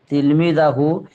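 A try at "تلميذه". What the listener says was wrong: তিলমিজ জাহু হইব কেন? তিলমিজহু।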